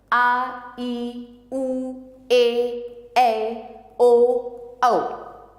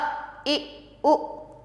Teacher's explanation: जिन स्वरों के उच्चारण में ह्रस्व स्वरों से अधिक लगभग दुगना समय लगता है उन्हें दीर्घ स्वर कहते हैं। ह्रस्व स्वर से दुगना समय जिसमें लगता है बोलने में।